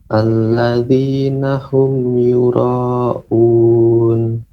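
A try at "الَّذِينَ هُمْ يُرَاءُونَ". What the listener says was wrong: Lebih panjang lagi Pak. Yura'un.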